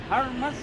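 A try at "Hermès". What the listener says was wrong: Hermes. H is silent. H is silent.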